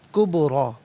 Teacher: کبریٰ با ساکن ہے لیکن حرف قلقلہ ہے تو آواز لوٹتی ہوئی محسوس ہونا چاہیے، کبریٰ۔ را پر کھڑا زبر ہے، را کو پر کر کے پڑھا جائے گا۔